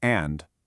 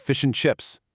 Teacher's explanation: it gets compressed into the valley between two peaks, weakening into a tiny little schwa sound or sometimes just an n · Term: weak, compressed form